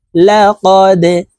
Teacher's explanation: দাল কলকলার হরফ নিচের দিকে ধাবিত করে ধাক্কা দিয়ে উচ্চারণ করতে হবে